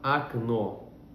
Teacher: Vamos pegar a primeira palavra, окно, janela. Por que no começo da palavra eu tenho um O e pronuncio como um A